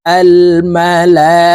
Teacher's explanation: মদের হরফের উপরে মোটা চিহ্ন বামে হামজা মধ্যে মুত্তাসিল চার আলিফ টানিয়া পড়িতে হয় এই কারণে এই লামকে চার আলিফ টেনে পড়বো আল মালা হামজা